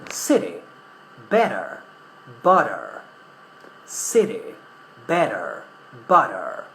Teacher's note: I'm not only pronouncing intervocalic T, but I'm also pronouncing the final R.